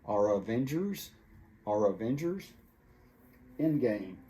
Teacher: the R from the word are kind of jumps over to the word Avengers